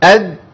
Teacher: لو احنا مشينا نفس في الدال تبقى تاء ولو منع النفس عن التاء تبقى دال